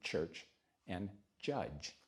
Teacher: The next one, the next set of sounds, is created just when the tongue, the back and the sides of the tongue meet a little bit further forward for the sound of cha or ja